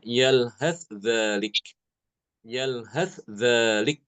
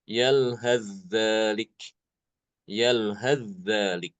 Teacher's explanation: Imam Hisham justru malah mengidharkan sa itu. Sa-nya diidharkan ke zal.